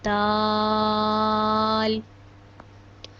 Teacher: جب ہماری زبان کی نوک اوپر والے دو دانتوں کی جڑ سے لگے گی تو دال ادا ہوگا۔ دال کو ہم 5 الف کے برابر لمبا کرتے ہیں، دال۔